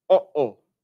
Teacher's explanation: This is a fancy linguistic term, which basically means you cut off the puff of air, cut off the air in your voice box. For instance, if you say, uh-oh, that little stop where it cuts off that air is this sound. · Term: glottal stop